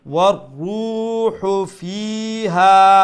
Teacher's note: রার উপরে তসদিদ আছে না, তো দুইটা রা উচ্চারণ করতে হবে। ওয়ার যখন বলবো তাইলে প্রথম রা উচ্চারণ হলো, তো আর তারপরে রু যখন বলবো দ্বিতীয় রা উচ্চারণ হবে।